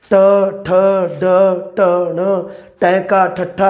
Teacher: ਸਾਡੀ ਜੀਭ ਹੈ ਜਿਹੜੀ ਉਹ ਪੁੱਠੀ ਹੋ ਗਈ, ਇਸ ਕਰਕੇ ਇਹਦਾ ਨਾਮ ਹੈ ਮੂਰਧੁਨੀ ਜਾਂ ਉਲਟੀ ਜੀਭੀ। ਉਲਟੀ ਵੋਮਿਟਿੰਗ ਵਾਲੀ ਉਲਟੀ ਨਹੀਂ, ਉਲਟੀ ਮਤਲਬ ਕੀ ਹੈ, ਜਿਹੜਾ ਸਿੱਧੇ ਦਾ ਵਿਰੋਧੀ, ਉਲਟੀ, ਛਾਲੀ ਵਾਲੀ ਉਲਟੀ ਨਹੀਂ, ਉਲਟੀ ਜੀਭੀ, ਪੁੱਠੀ, ਉਲਟੀ ਜੀਭੀ ਧੁਨੀਆਂ ਇਹ ਨੇ ਸਾਡੀਆਂ ਉਲਟੀ ਜੀਭੀ ਧੁਨੀਆਂ।